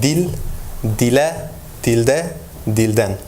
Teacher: when there's a front vowel e, the suffixes in, let's say, in dative form and locative form, instead of a, the a is appearing as a front vowel. So it shows that we have a backness harmony.